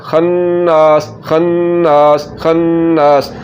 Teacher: यहाँ पर ये नून मुशद्दद आ गया तो गुन्ना होगा और उसके बाद अलिफ आ गया तो इसको लंबा करना है। तो कैसे पढ़ेंगे, खन्नास खन्नास, पहले गुन्ना खन, फिर ज़बर के बाद अलिफ, नास लंबा करना है, खन्नास खन्नास खन्नास।